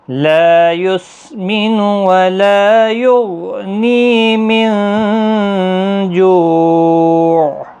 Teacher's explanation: لا الف مدہ ہے، نی یا مدہ ہے، جو واو مدہ ہے، تینوں کو 1 الف کی مقدار کے برابر کھینچیں